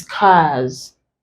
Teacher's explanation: But this is cars, lose, his, lace. The here is pronounced as Z because R is a voiced consonant